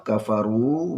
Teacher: waw sukun, panjang 2 harakah